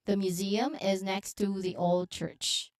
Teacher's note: the emphasis here is on the old church